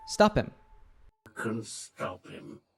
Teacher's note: The H sound in him is dropped, and the P sound from stop links to him, so we hear stop him.